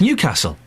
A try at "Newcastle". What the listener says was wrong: It's not even Newcastle, it's Newcastle. Newcastle, you put the weight on the castle. Newcastle, that's what they say in Newcastle.